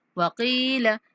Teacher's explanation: وقیل کاف کو بھی کھینچیں گے لام کو لمبا نہیں کریں گے